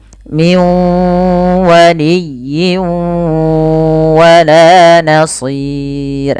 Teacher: kita namakan dengan bacaan Idgham idgam artinya memasukkan apa yang dimasukkan bunyi huruf nun nah dimasukkan kemudian sambil ditahan dengan gunah